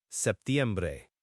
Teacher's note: Traditionally, it's often pronounced with a very soft P, or sometimes it's almost dropped in casual speech, but the most standard pronunciation includes it.